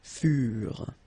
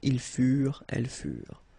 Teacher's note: ENT, you know, the ending for the plural form is never pronounced